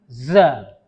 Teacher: Nah, kalau za beda makhraj. Za itu ada tekanan, hurufnya ditekan sehingga dia seperti suara lebah.